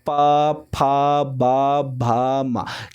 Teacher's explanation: आप प फ बोलोगे तो होठ में होठ आपका क्या होगा, सटेगा, ठीक है। बोलने में आपका होठ में होठ सटेगा